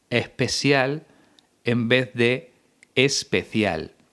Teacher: se junta la s aspirada con el seseo